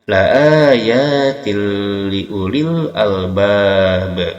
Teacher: tanwin kasrah bertemu dengan lam, ini adalah idgham bila gunnah